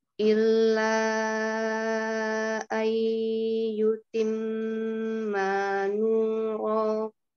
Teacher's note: Kemudian la-nya tadi kurang panjang ya. Di sini tidak dua harokat tetapi empat ya, karena di sini mad silah tawilah · lamnya tidak perlu ditahan ya. Cukup ditekan saja lam tasydidnya, tidak perlu lama